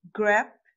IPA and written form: ɡræb (grab)